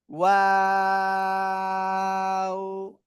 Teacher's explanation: এই যে ওয়াও, ঠিক আছে? শুরুতে গোল, আবার মাঝখানে দুই দিকে প্রসারিত হবে, শেষে আবার গোল হবে